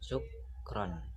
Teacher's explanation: terdapat jeda di antara kedua suku kata tersebut, yakni di antara suku kata syuk dan juga ron. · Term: sendi tambah